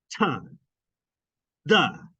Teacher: your tongue blocks the flow of air between your tongue and your alveolar ridge. Pressure builds up and it pops out. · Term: alveolar plosives